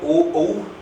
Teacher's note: ओ और औ में कंठ के साथ साथ ओष्ठ होगा। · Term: कंठ ओष्ठ